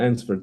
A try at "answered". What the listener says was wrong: Answered, be careful. Answered without the w.